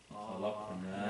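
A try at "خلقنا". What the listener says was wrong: No, you don't want to say khalaqna. That means we created Allah. So pronounce the fatha on the pronounce the fatha on the qaf. Khalaqana. Okay, because the conjugation is very important. Khalaqana is the verb khalaqa, right?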